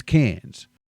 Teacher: Mate, the R is silent. It's just vibing there. It's doing absolutely nothing.